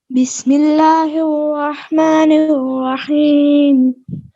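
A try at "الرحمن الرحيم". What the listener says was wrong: الرحمن الرحیم، کریے الرحمن الرحیم، اس میں آپ کے جو لب ہے نا وہ رول ہو رہے ہیں، اس کو ذرا اوپن رکھیں، ہونٹوں کی جو سائڈیں ہیں نا یہ بند نہ ہوں، کھلے ہوں، جس طرح لقمہ ڈالنے میں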